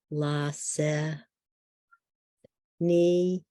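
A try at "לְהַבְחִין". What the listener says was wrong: V, Lasech V, it's a Vav.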